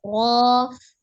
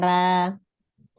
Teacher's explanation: ketika huruf ro berfathah dia tebal ya, tidak dibaca tipis, harus dibaca tebal. Ro bukan ra.